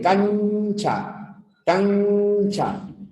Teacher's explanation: Ya la N en cancha es una N palatal. · La lengua se arquea un poco y va hacia esta zona. Cancha. Y esta zona es el paladar.